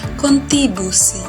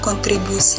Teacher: untuk penghilangan fonim yaitu fonim R